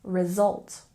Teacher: can you hear how the S makes more of a z sound